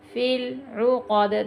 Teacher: دال پہ پھر کلکلا ہوگا کیونکہ ساکن ہو گیا۔ فی العقد، حروف کلکلا کے 5 حروف ہیں، ان میں ایک دال بھی ہے۔